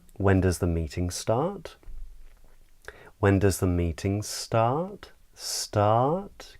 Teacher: start it rises it comes up in the voice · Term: rising intonation pattern